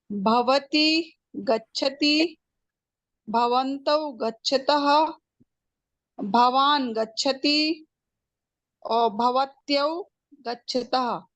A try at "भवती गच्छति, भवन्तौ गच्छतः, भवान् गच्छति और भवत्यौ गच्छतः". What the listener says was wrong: आम् शोभनम्।